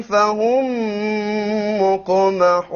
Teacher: Because it's preceded by a قاف. فهم, aha, silent meme followed by another meme. إدغام شفوي